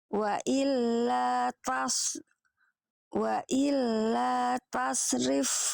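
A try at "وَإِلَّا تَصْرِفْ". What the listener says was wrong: Tebalkan lagi. Yang ini kurang tebal. Soalnya yang awal bagus, yang ini kurang tebal. Wa illa tasrif ya. Jadi PR-nya short sukun nanti di beberapa keadaan kurang tebal ya.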